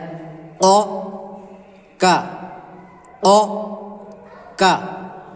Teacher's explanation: اس میں ہونٹ گول بھی ہوتے ہیں اور حلق سے بھی پڑھا جاتا ہے